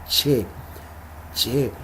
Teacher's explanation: Primero detenemos el aire y luego la dejamos salir como raspando, llamemos así, la lengua y el paladar.